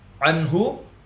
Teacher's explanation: izhar halqi terbacanya jelas tanpa dengung jelas nun-nya